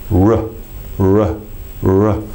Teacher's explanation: So when I put the two things together, r, you can see I'm making the little dog sound, the tongue is flicking through, and the lips are releasing as the tongue flicks through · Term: R sound